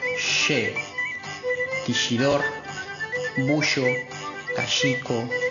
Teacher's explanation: Conservación del sonido prepalatal fricativo sordo